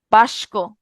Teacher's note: শব্দের মধ্যে দুটি ব্যঞ্জন যদি পরস্পরের স্থান পরিবর্তন করে, তখন সেটাকে আমরা কি বলবো? সেটাকে আমরা বলবো ধ্বনি বিপর্যয়